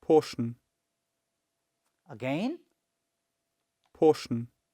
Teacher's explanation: So the first syllable is pronounced with relatively loudness. Means when you heard this word, the first syllable or the first part, which I have already underlined here, was pronounced with a little louder or loudness than other portion or other part of this word.